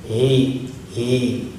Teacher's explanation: Ada getaran di dadanya, itu karena sifatnya dari pangkal tenggorokan. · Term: ha pertama